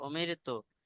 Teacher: রসায়নের ডান দিকে জের থাকার কারণে রটাকে আমরা বারিক পড়ছি, অর্থাৎ মুখ খুলে পড়ছি